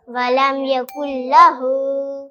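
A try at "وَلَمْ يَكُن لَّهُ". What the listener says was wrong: और वलम यकुल्लाहु के अंदर जो लाम है ये मुतहर्रिक है, और मुतहर्रिक हर्फ को खींचा नहीं जाता, ठीक है।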